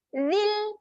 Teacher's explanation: pada kalimah ini, ya ini tidak dibacakan panjang. Seolah-olah tidak berfungsi lah. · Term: pendek